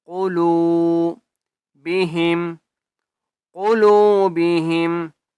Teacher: قاف کو موٹا کر کے پڑھیں گے واو مدہ ہے لام کو ایک الف کی مقدار کھینچ کر